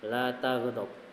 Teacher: sifat idhiraf, miringnya lidah